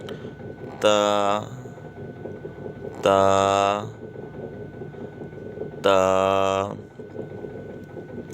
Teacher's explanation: زبان کی نوک جب اوپر کے اگلے 2 دانتوں کی جڑ کی طرف والے آدھے حصے سے لگے تو یہ حرف پڑھا جائے گا